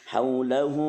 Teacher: hu-nya 2 harokat, ini namanya mat silah qasirah. Jadi matnya dibacanya pendeknya hanya 2 harokat karena ada mat silah qasirah, ada mat silah tawilah.